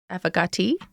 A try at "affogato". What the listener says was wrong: Affogato. Toes, yes. That's how the Italian man is saying it.